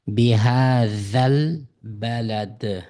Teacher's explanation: zal harfi tilimizni tishlab chiqargan harfi. Z emas, uyg'urchadagi za deb inglizchadagi z ga o'xshab qolgan harfi.